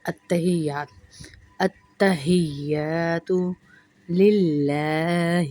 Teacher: ات پہ سختی ہوگی، سختی کے ساتھ پڑھیں گے، اور تا کی 2 آوازیں آئیں گی